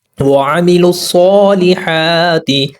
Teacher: لام کو صاد کے ساتھ ملائیں گے اور جمع سختی کریں گے۔ دوسرا جو صاد ہے یہ ہیوی لیٹر ہے، یعنی پر پڑھا جانے والا حرف ہے، اس کو موٹا ادا کریں گے۔